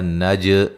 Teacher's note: نج جیم پہ قلقلہ کریں گے